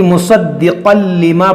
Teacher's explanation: تنوین کے بعد لام ہے, تو یہاں پر بھی غنہ نہیں کریں گے بلکہ مصدقا لما پڑھیں گے, مصدقل اس طرح غنہ نہیں کریں گے.